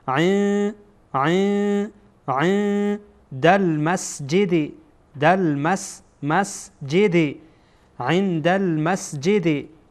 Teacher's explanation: عین بعد از نون ساکن دال آمده، اینجا نون ساکن هست، اینجا هم دال. بعد از نون ساکن دال آمده و دال از حروف اخفا هست، بنابراین نون ساکن را ما اینجا اخفا میکنیم